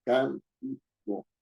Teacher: Si yo digo la palabra cántico, tiene tres sílabas, cántico. La mayor fuerza de voz está en can, no está en ti ni está en co. Yo no digo cantico ni cantico, estoy diciendo cántico. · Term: antepenúltima sílaba